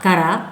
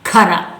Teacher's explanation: ಕ ಅಲ್ಪಪ್ರಾಣ, ಖ ಮಹಾಪ್ರಾಣ.